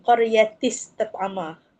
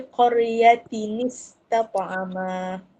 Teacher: tanwin tu bertemu dengan hamzah wasal, kita kena tukar jadi nun kecil.